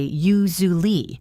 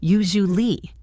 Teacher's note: It sounds almost like one smooth sound. u-zu-ly The S sound turns into a zhoo sound, like the sound in the word measure or vision.